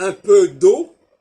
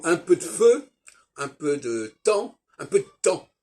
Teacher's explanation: le D de un peu d'eau, on peut ne pas l'entendre